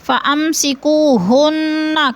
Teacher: فَأَمْسِكُوهُنَّ کی نون مشدد ہے، سختی سے جمع کر پڑھیں گے